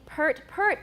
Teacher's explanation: without the r we use it only in british for these words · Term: reversed epsilon